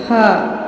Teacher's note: جو دو آنکھوں والی ہا ہے، اس کی آواز سینے سے نکلے گی